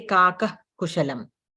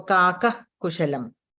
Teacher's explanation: if the visarga is followed by ka, we don't make that complete sound of the visarga, but still it has to be pronounced where we let out the breath from the throat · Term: jihvamuliyah